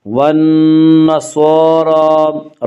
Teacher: صاد کے اوپر کھڑا زبر ہے، را کے اوپر بھی کھڑا زبر ہے، کھڑا زبر کو 1 الف کے برابر کھینچ کر پڑھیں گے۔ والنصارى، را کو پر پڑھیں گے۔